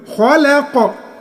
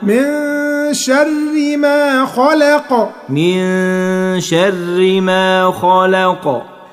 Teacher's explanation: والقاف مفتوحة بس انت هتسكنها، نعمل قلقلة